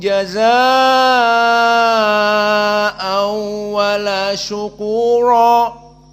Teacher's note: jazaa'a di sini al-isba', dan an dengan waw idgham bi gunnah